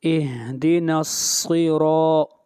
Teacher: را کے اوپر فتحہ یعنی زبر ہے، اور را کو بھی موٹا پڑھا جائے گا۔ اہدینا الصراط، را کو کھینچ کر پڑھیں گے 1 الف کے برابر۔